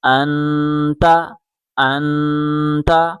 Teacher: نون کے اوپر جزم ہے، جزم ملانے کے لیے ہوتا ہے، یہاں غنہ پیدا ہوگا، ناک سے آواز نکالیں